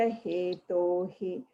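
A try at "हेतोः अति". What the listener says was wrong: So you're saying Hetohi. It's Hetoho. Because after the to there is a r, right? It's a combination of a visarga and a a. So that's why it's Hetoho Ati Sukama.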